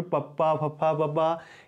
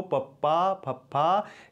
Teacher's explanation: ਤੁਹਾਡੇ ਜਿਹੜੇ ਹੋਂਠ ਹੈ ਉਹ ਆਪਸ ਵਿੱਚ ਮਿਲਦੇ ਹਨ। ਜਿਵੇਂ ਬੋਲ ਕੇ ਦੇਖੋ ਪੱਪਾ ਫੱਫਾ, ਇਸ ਤਰੀਕੇ ਦੇ ਨਾਲ ਹੋਠ ਹੈ ਜਿਹੜੇ ਉਹ ਮਿਲ ਕੇ ਵੱਖੋ ਵੱਖ ਹੋ ਜਾਂਦੇ ਹਨ। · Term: ਹੋਠੀ ਧੁਨੀਆਂ